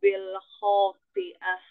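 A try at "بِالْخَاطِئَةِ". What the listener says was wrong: th th tebalkan lagi thnya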